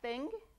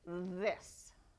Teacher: the th makes two different sounds it can be unvoiced like thing or it can be voiced like this